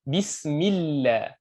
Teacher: Mallah ataupun mullah, itu baru lamnya lam tafkhim tebal. Tapi kalau sebelum Allah ni barisnya baris bawah jadi tipis.